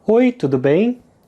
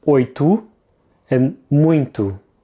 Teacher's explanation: the O at the end of the word tudo. It's pronounced as a short U sound, and that's normally the case when the O is the last letter in a word, and that's if the O doesn't have any accents above it, if it's just a plain O.